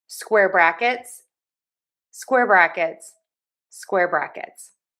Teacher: We are going to make sure that we stress syllable number one.